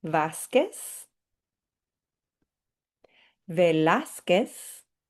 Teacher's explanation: And these last two, you'll notice that that Z is at the end, and we learned in the original session about how the Z is going to sound like an S